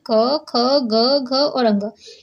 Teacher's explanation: कंठ की ध्वनियाँ कौन सी होती है। कंठ ध्वनियाँ क वर्ग के जितने भी व्यंजन है वो हमारे कंठ के द्वारा ही बोले जाते हैं।